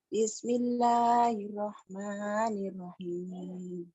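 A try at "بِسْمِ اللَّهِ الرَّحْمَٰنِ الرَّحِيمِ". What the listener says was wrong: Tasjidnya kurang. Bismillahirrahmanirrahim gitu.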